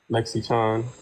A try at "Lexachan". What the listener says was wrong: Lexa is an A. You're saying Lexi. Everyone wants to pronounce it as Lexi, and I don't know why, but I understand it. It's like Yes, Lexa. Yeah, lexachan.